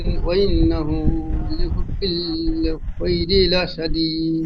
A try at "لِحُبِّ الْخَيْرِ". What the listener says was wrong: লিহুব্বিল বলে একটু গুণনা হয়ে যাচ্ছে, বা লামসের বিল একটু টান হবে না, গুণনা হবে না। লিহুব্বিল বলে গুণনা হয়ে যাচ্ছে, খেয়াল করে